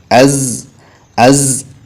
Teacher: രണ്ടു പല്ലുകളും കൂട്ടിപ്പിടിച്ച് നാവിന്റെ കൂർത്ത അറ്റത്തിൽ നിന്ന് പറയേണ്ട അക്ഷരമാണ് സാ · റിഹ്വത്ത് എന്നുള്ള ഒരു വിശേഷണം അതിനുണ്ട്. ശബ്ദം നീളണം.